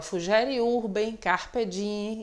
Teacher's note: Que na realidade a pronúncia correta é o dieme, só que a gente coloquialmente não costuma dar ênfase a esse fonema M, então a gente fala fugere urbem, carpe diem e assim por diante.